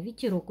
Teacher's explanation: ударения падает на третий слог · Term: Ударение